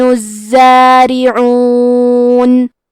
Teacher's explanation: کلمت الزارعون میں حرف زے پہ تشدید ہے لہذا 2 حرف کے برابر حرف زے کو پڑھیں گے، کیونکہ تشدید کی اصلیت 2 حرف ہے.